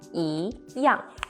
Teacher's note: See, young is the fourth falling tone. E young, meaning the same.